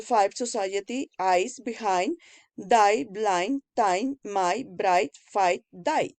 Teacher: The diphthong a's begin with an open vowel that is between the front and back position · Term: closing diphthongs